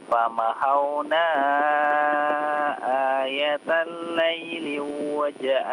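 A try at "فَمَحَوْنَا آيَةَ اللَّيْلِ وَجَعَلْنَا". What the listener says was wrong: Jangan diidghamkan, tidak ada di situ lamnya, tidak ada masuk ke waw ya. Coba ulang lagi.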